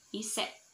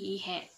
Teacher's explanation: huruf H-nya jika diucapkan oleh orang pesisir maka menjadi ise, bukan ihe tapi menjadi ise.